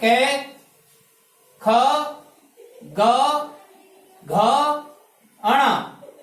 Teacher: कंठ से बोले जाते हैं ये। जीभ कंठ से टकराती है इनका ध्वनि कंठ से निकलती है। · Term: कै वर्ग